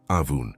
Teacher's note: with the first ah coming from deep in your throat and the oon nasal.